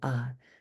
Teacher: you add the a particle which is a third midtone